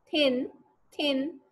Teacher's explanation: आपके दांतों के साथ आपकी जबान की टिप लग रही होगी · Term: डेंटल्स